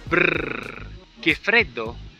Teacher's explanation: La R è una consonante sonora perché per la sua emissione vengono attivate le corde vocali. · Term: R sonora